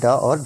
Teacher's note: तो मूर्धन्य व्यंजन है हमारे ड और ढ